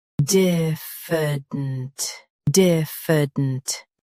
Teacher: Stress D. Keep F soft and dint quick.